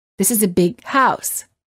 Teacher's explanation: However, you wouldn't say, this is a big house. Instead, you would hold the G sound of the word big, and you would say, this is a big house.